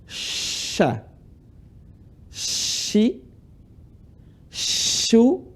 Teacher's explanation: huruf Sya tempat keluarnya adalah Tengah lisan ketemu langit-langit ini Tengah Lisan Ini anggap lisan tangan saya ini ujung lisan